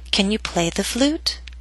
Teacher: It first hits the ground and then bounces up into the air. So down a little bit on play and then start rising up, up, up until the end of the question. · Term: rising intonation